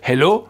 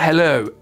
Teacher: la diphtongue O, en anglais britannique est très présente